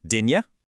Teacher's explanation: The T becomes that glottle stop and the U softens into a J sound.